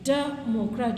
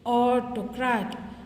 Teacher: so first syllable you have to stress